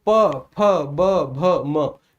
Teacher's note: प वर्ग को उच्चारित करने के लिए सर इसका उच्चारण ओष्ठ से होता है